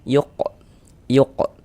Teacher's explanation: Huruf qaf termasuk salah satu huruf qalqalah. Kalau dia sukun mantul. Yuq yuq. Dan huruf qof ini dia ee termasuk kepada qalqalah sugur, qalqalah kecil.